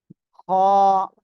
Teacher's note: গলার শেষ ভাগ অর্থাৎ জিহ্বার গোড়ার কাছাকাছি জায়গা থেকে আমরা এটা উচ্চারণ করব